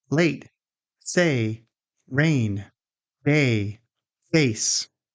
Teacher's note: this is a diphthong, meaning your mouth moves during the sound. It begins with an sound and glides upward toward an sound. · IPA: /eɪ/